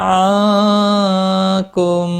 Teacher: نا الف مدہ ہے، ایک الف کے برابر کھینچ کر پڑھیں گے۔ نون ساکن کے بعد حروف اخفا کا کاف ہے، اخفا حقیقی ہوگا · میم ساکن کے بعد دوسرا میم آیا ہے، ادغام شفوی ہوگا، گناہ کے ساتھ پڑھیں گے۔